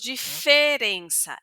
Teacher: Ese e va a ser un poquito más cerrado, pero no será nasal.